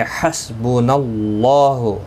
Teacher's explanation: اللہ کا لام زبر کی وجہ سے پر پڑھا جائے گا. اس کے اوپر کھڑی زبر بھی ہے، ایک الف کی مقدار کے برابر کھینچ کر پڑھیں گے.